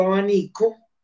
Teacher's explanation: la b que es el fonema de acuerdo al contexto fonológico me forzó a que esta vez cambiará su naturaleza articulatoria se convirtiera en beta